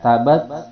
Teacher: ada hembusan napas yang keluar itu hamas